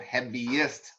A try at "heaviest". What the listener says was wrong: there's no R in their heaviest